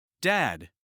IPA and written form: dæd (Dad)